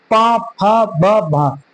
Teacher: पा फ ब भ उच्चारण कर रहे होंगे तो ओठ आपस में टकरा रहे होंगे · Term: ओष्ठ ध्वनि